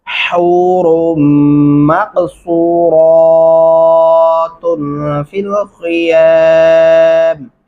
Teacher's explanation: صاد پڑھیں گے، سین نہیں پڑھنا، را کو موٹا پڑھیں گے